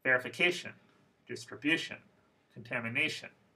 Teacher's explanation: I hope you noticed that word stress is in the fourth syllable